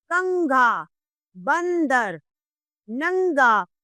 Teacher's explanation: जिन वर्णों को बोलते समय नाक से ध्वनि निकलती है उन्हें अनुस्वार कहते हैं। अनुस्वार के उच्चारण के समय हमारी ध्वनि नाक से निकलती है।